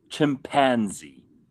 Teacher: Americans put the emphasis on pan.